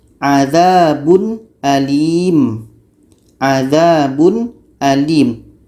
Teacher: Jadi di sini izhar halqi dibaca jelas ya, jelas dan tidak dengung. jelas tanwinnya dan jelas hamzahnya.